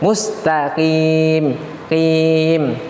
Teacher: huruf qaf yang berbaris bawah memang huruf-huruf yang tebal namun ketika dia berbaris bawah maka berkurang ketebalannya sedikit maka Bukan dibaca mustaf YIMM tetap ketika huruf berbaris bawah kasrah